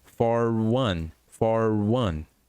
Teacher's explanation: O R do for vai juntar com one. E se lembre que one tem som de U no início, então for one.